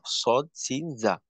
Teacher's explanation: তো 12 নাম্বার মাখরাজ, জিহ্বার আগা সামনের নিচের 2 দাঁতের পেট আগার সঙ্গে লাগাইয়া